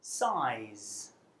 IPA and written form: saɪz (size)